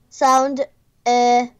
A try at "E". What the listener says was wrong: Только ты чуть-чуть его тянешь. Э.